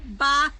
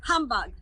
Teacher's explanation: the H at the end of the word bah is silent, and the H at the beginning of the word humbug is pronounced